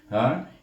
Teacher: ha baris di atas bunyi ha, di belakang dada sikit dia tu pangkal halqum,